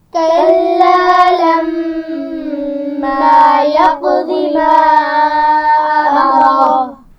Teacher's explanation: یقضی قاف پر قلقلہ ہے اور ضاد کو موٹا پڑا جائے گا. ما امرہ میم پر چھوٹی مد ہے تو اس کو تھوڑا سا کھینچ کر پڑھیں گے، اور امرہ را کو موٹا پڑا جائے گا.